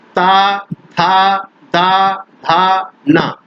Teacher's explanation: ये जितने वर्ण है सबका स्थान दंत होता है।